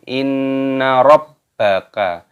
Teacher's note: Nun tasydid dibaca ghunnah berdengung